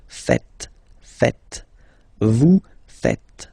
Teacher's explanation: remember, final S here is not pronounced, and then this is not pronounced either.